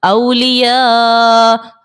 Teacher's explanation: الف مدہ حمزہ جو ہے وہ عین کی شکل میں ہے مد متصل کا یہاں پر قاعدہ لگے گا اور 4 سیکنڈ کی مقدار ہم اس کو کھینچ کر ادا کریں گے